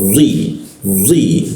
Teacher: lidahnya dilengkungkan dan ketika dibaca d itu ada hembusan ada hentakan ke bawah